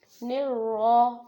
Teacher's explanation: جب را کے اوپر زبر آ جائے تو را کو موٹا ادا کرنا ہوتا ہے۔ رحیم، اور یہاں پر کیا ہے، ہم رک رہے ہیں، یعنی کہ بات مکمل ہو رہی ہے، اس لیے ہم یا ساکن ہے اور اگلا میم کو بھی ساکن بنا رہے ہیں اس گول ہا کی وجہ سے۔